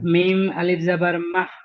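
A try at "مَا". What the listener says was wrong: হয়নি, হয়নি, মিম হা যাবার মাহ, তবে হবে, মিম আলিফ যাবার মা, এটা কেমন, আর মাহ, মাহ দুটো আলাদা হচ্ছে না, মা এক আলিফ টান হবে, হ্যাঁ মা,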